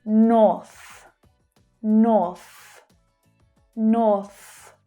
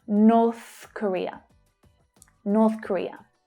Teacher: the unvoiced TH consonant sound. North, north, north. Push that air out through your mouth.